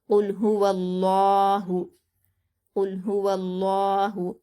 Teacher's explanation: हा पर हरकत जल्द पढ़ेंगे, वाव को लफ्ज़ अल्लाह के लाम से मिलाकर पढ़ेंगे, और लफ्ज़ अल्लाह से पहले वाव पर ज़बर है, तो लफ्ज़ अल्लाह को पुर पढ़ा जाएगा, यानी मोटा पढ़ा जाएगा